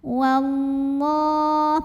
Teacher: cara baca lam jalalahnya dibunyikan dengan menebalkannya. Wallah, pangkal lidah kita naik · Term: tafkhim